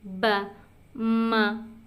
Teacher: dia keluarnya di antara dua bibir